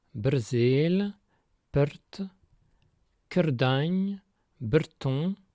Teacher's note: très souvent, on inverse le R et le E pour obtenir heure, ce qu'on appelle une métathèse.